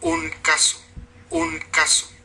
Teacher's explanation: su barra de explosión, sin barra de sonoridad porque no hay vibración de cuerdas vocales, la vocal A, la fricativa alveolar y la vocal final, una O. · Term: la velar